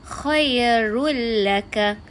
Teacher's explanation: Seolah-olah tanwin tu telah digabungkan dengan huruf lam tanpa ada dengung.